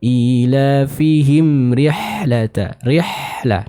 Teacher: Nah, ada suara yang dialirkan dari huruf H ini. Maka harus kita sempurnakan suara yang dialirkan atau suara yang mengalir dari huruf H ini.